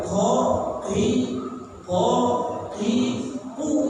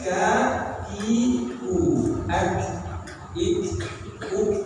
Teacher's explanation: pangkal ini di sini kafnya Q sama Kaf sudah beda sifatnya kalau Q dia sifatnya tidak boleh mengalirkan nafas ya nah jadi dia sifatnya jahr tidak boleh ngalirkan napas